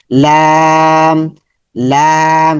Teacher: জিহ্বার আগা উপরের উপরের দাঁতের মাড়ির সঙ্গে, উপরের দাঁতের মাড়িতে লাগবে।